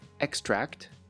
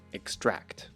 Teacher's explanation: You have the noun EXtract and the verb exTRACT. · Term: stress